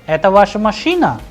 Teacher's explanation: So at the end the pitch of the sound is rising.